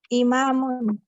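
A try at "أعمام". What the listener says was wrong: Imamun lagi. Salah. Imamun nggak ada ainnya.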